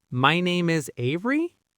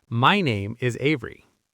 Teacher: A confident speaker ends statements with a falling intonation. their voice goes down.